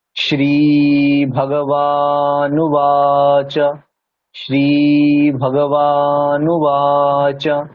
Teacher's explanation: শ্রীটা কিন্তু দীর্ঘ, বাটা দীর্ঘ, আবার এখানে নুবা এটাও দীর্ঘ, তাহলে তিনটে দীর্ঘ আছে, শ্রী বা আর বা, তাহলে তিন জায়গায় দীর্ঘ টানতে হবে।